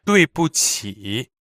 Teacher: 对 is fourth tone, 不 is also fourth tone, and 起 is third tone.